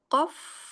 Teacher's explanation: Lanjut nun sudah, fa sudah, qaf. Qaf, yaitu lisan pangkal lidah bertemu dengan langit-langit yang lunak